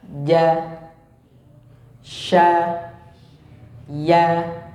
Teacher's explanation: lidah bagian tengah pada posisi langit-langit bagian atas. Jadi lidah dengan langit yang atas, ya. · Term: jim, shin dan ya